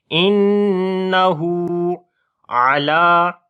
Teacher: عین کو گلے کے درمیان والے حصے سے پڑھیں گے، لام کو لمبا کریں گے، کھڑی زبر ہے. · نون کے اوپر شد ہے، غنہ کریں گے اور ہو کو لمبا کریں گے، اس کے اوپر الٹا پیش ہے.